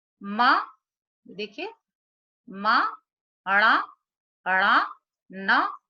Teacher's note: न तथा अनुस्वार का उच्चारण स्थान नासिका है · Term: नासिक्य